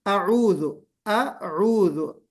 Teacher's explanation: अऊजु नहीं बल्कि अऊजु, अऊजु, अ अलग है, ऊ अलग है, मर्ज नहीं करना है।